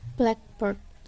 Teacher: blacknya ini lebih ada tekanannya daripada bird